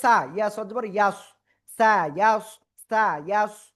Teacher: সিন চিকুন আর সদ মোটা